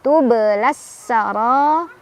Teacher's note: Ro-nya dibaca secara tafkhim karena ro-nya berbaris fathah, jadi ditebalkan. Sara, ra, mad wajib muttasil karena ada mad tabi'i bertemu dengan hamzah dalam satu kalimat.